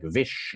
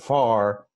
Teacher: in Somerset dialect, they changed all of their Fs to Vs